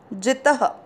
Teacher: दूसरा चरण, ये ना के साथ आधा त, ये नात, म पे दो मात्रा है, मई, ये नात मई, वा के साथ आधा त, वात, म में अ मिक्स करेंगे, मना, वात मना, जित, त में अ मिक्स किया, जित, त में अ की मात्रा तो विसर्ग को पढ़ेंगे ह